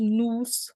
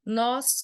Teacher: Então, existe diferença na tonicidade. Nus, o som é fechado. Nós, o som é aberto.